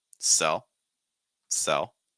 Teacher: Dark L sound at the end.